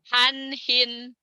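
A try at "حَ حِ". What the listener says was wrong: hanya gede tuh, Bu. Han, hin, Tapi bukan digituin. Bukan gede, han, hin, bukan. Han, hin. Jadi Ibu latihannya kalau H gede, alhaakumut, alhaakumut, alhahaha, alhaakumut, ya, alhaakumut. Kalau H kecil, alhamdu. Ya, ar-Rahman. Han hin. Ain. In huwa, jelas ya Bu ya? Maksudnya jelas tuh bunyi nunnya jelas.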